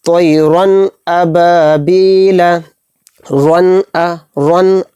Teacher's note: تو اس میں جو رن میں را دو زبر رن میں جو نون کی آواز نکل رہی ہے اس کو ظاہر کرنا ہے، اس میں گننا نہیں کرنا. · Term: اظہار